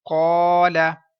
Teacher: الف مدہ ہے، لمبا بھی کیا جائے گا 1 سیکنڈ، پر پڑھا جائے گا کیونکہ الف سے پہلے پر حرف ہے۔